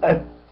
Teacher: لا أقلقل التاء. التاء ليست من حروف القلقلة، فأقول أت. أي إت.